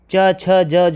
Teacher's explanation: च, छ, ज, झ, तालव्य होता है। यह स्पर्श संघर्षी भी कहलाते हैं।